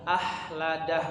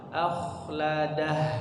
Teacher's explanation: Ahnya jangan terlalu tipis, jangan hilang huruf kha-nya, jangan jadi ha